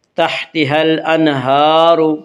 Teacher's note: ہا کے اوپر کھڑا زبر ہے، کھڑا زبر کو ایک الف کے برابر کھینچ کر پڑھیں گے۔ تحتها الانہار، الانہار کی را کو پر پڑھا جائے گا، اس کا قاعدہ ہے کہ را کے اوپر زبر اور پیش آئے تو را کو پر پڑھا جائے گا، را کے نیچے زیر آئے تو را کو باریک پڑھا جائے گا، یا را کے اوپر پیش سے را کو پر پڑھیں گے۔